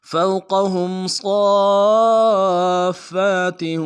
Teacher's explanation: فا کے اوپر تشدید زور دیں گے. اگلے فا کے اوپر کھڑا زبر ہے، ایک الف دال میں کھینچیں گے، تاکہ تنوین کو واو کے ساتھ ملانا ہے، واو کے اوپر تشدید زور دیں گے.